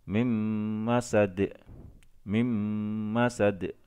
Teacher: Jadi nunnya dilebur masuk ke dalam huruf mim dengan berdengung. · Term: idgham bi gunnah